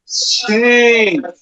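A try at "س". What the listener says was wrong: না, তাহলে তো সিটি হলো না। আপনি বুঝতে পারছেন সিটি হবে, কিন্তু সিটি হচ্ছে না উচ্চারণের সময়, আপনারটা বিপরীত হয়ে যাচ্ছে। এটা হবে সিটি দেন সিন।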